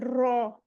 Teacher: من الشیطان رو، رو، رو کے اوپر زبر ہے، اس میں رو کی آواز آنی چاہیے، 2 دفعہ رولنگ ہونی چاہیے